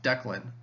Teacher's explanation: The stress is on one part and then the other part is unstressed. Dec has stress on it and then Len has less stress on it.